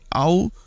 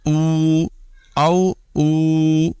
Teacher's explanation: ہم او کو لین کی صورت میں نرمی کے ساتھ ادا کریں گے او، اور مدہ کی صورت میں کھینچ کر ادا کریں گے